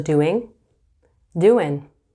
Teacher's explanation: So sometimes the ing could turn into an in.